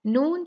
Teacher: نون جو ہے یہ حروف مقطعات میں سے ہے اور اس کو ہم 6 کاؤنٹ کھینچیں گے۔